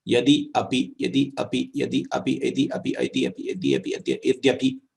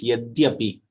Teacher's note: Here, you have the transformation taking place on one side of the sound. That is, the sound Ikara got replaced by Yakara